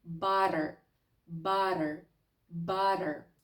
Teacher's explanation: Цей звук мегашвидкий. Це таке собі легесеньке поєднання звука т з дуже м'яким звуком д